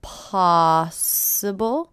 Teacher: Possible. First syllable is stress.